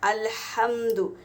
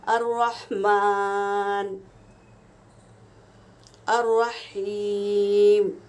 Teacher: ہا ہوا کے ساتھ نکالا جاتا ہے۔